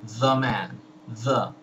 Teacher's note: It's a central vowel. The lips are not rounded. The lips are not particularly closed or open. It's just a very relaxed vowel, easy to pronounce. The. When you say the, and you don't, and it's not stressed, for example, the man. · That's the stress version of the, which sounds like seat, the. But this is the unstressed version of the man, which has a schwa sound.